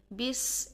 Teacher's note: تو بس، با کی زیر کو ہم بہت باریک انداز میں پڑھیں گے، اور سین کے ساتھ جب ہم اس کو ملائیں گے تو سین میں سیٹی پیدا کریں گے۔ سیٹی بالکل باریک ہونی چاہیے اور سانس جاری رہنے کے ساتھ ہونی چاہیے